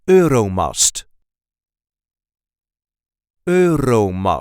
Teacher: there is a light emphasis on the first syllable